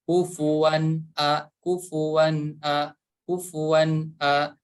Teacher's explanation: Tanwin fathah bertemu dengan huruf hamzah, maka harus dibaca jelas.